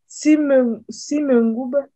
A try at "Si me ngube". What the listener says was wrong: Mais il faut tirer le OU. Si me ngube. Ce n'est pas B. Ngube.